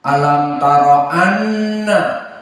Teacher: Annallaha nun musyaddadah wajibul gunnah. Alam taro anna, maka dia gunnah dari khaisum.